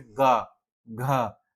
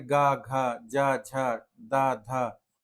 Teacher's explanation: अब आते हैं कुछ वर्ण जैसे घोष और अघोष, जिनके उच्चारण में स्वर तंत्रियां कंपन करती हैं उन्हें घोष वर्ण कहते हैं,